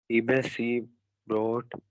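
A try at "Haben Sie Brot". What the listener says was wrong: हेबन नहीं है, हाबन जिब्रोट।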